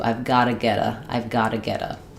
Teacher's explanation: We can also do a flap T on got to if we change got to gotta. So gotta, we write it with two T's, we say it with the flap sound.